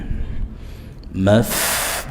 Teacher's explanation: fa sukun ada hams ada nafas, bi kumul maftu Tayyib ya, tu mat arid lisukun 4 harokat dibaca dengan memonyongkan bibir dan nunnya dibuka ya, tun.